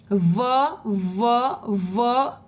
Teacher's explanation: दंत और ओष्ठ। दांतों के बीच में से हवा बाहर निकलती है।